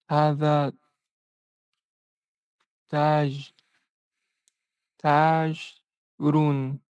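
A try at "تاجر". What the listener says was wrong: Put a little kasra right here. Taji. Taji.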